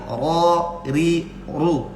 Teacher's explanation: Namanya makhrajnya itu dhahrur ra'sil lisan. Jadi ketika kita ngucapin ro, ujung lidah menggeser sedikit ke dalam dari makhrajnya nun.